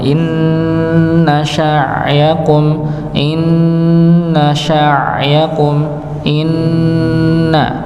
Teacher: diawali dengan huruf nun yang bertasydid maka didengungkan, ya, didengungkan.